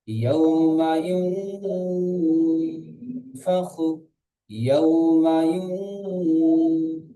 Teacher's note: অও সাকিনের ডান দিকে যাবার আছে, এটি অওলিন, অওলিনকে নরম আওয়াজে তাড়াতাড়ি পড়তে হয়। মিমের উপরে যাবার আছে, যাবারটি হলো হারাকাত, হারাকাতকে টান না দিয়ে তাড়াতাড়ি পড়তে হয়।